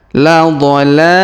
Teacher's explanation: huruf la kita panjangkan dua harakat karena Alif kecil di atasnya